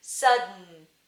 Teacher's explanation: tip of your tongue hits your alveolar ridge, and then the sound goes out your nose to make the N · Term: nasal release